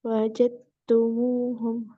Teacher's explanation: Ada idghamnya ya. Dal ketemu dengan taknya ya. Idgham mutajanisain.